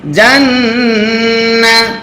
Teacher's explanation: নুনে যদি তাসদিদ হয় গুন্না করা ওয়াজিব হয়